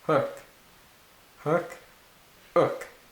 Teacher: you can tell that that was a really sharp start there when I said that because a little bit of pressure had built up in my throat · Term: glottal stop